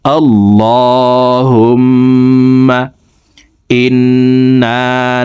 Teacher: তো দেখুন, এইভাবে পড়ব আল্লাহুম্মা। হুম এখানে ওয়াজিব গুন্নাহ, 3 সেকেন্ড পরিমাণ গুন্নাহ করে পড়ব